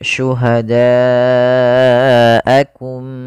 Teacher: Bila hamzahnya dalam satu kata, maka dinamakan dengan mad wajib muttasil. Maka cara membacanya panjangkan 4 harokat.